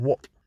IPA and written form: wɒʔ (what)